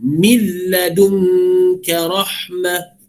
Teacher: Okey, min ladunka rahmah, min ladun, terus masuk lam, nun tu dibuang, seolah dibuang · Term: idgham bila gunnah